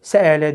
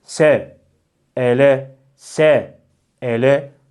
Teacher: s sini çıkarıyorsunuz daha sonra sesi kesiyorsunuz nefes de almıyorsunuz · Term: sekte